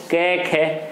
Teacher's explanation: के खे, तो कोई वाइब्रेशन नहीं हो रही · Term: अघोष